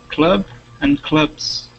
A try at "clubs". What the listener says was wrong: Okay, give me a Z sound there, clubs.